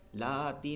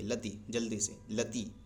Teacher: تو لتی پہ دیکھیے زبر ہے، زبر اور اس کے بعد الف نہیں ہے تو یہ بھی نہیں کھنچے گا. اس کو جلدی سے پڑھیں گے لتی، لتی، لاتی نہیں پڑھیں گے، لتی پڑھیں گے، لتی، جلدی سے لتی.